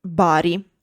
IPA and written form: ˈbari (Bari)